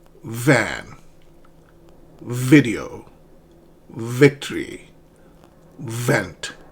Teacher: my bottom lip, it touches the top teeth. And that is how you pronounce this fricative VV.